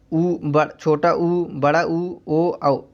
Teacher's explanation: वृत्तमुखी स्वर उसे कहते हैं जिन स्वरों के उच्चारण में ओठ गोलाकार होते हैं उन्हें वृत्तमुखी स्वर कहते हैं। तो ये कौन कौन से अक्षर हैं, छोटा ऊ, बड़ा ऊ, ओ औ, इन अक्षरों को यदि आप बोल के देखेंगे तो इनको बोलने पे जो है हम लोगों का ओठ गोलाकार हो रहा है, तो इसे वृत्तमुखी स्वर कहते हैं।